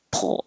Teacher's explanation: So if you have trouble with the word pull, which is the same sound here, pull, as soon as I finish my tongue's back for the R, pull. I'm putting my tongue in the L position, pull. And my tongue's going to the L before I release my P.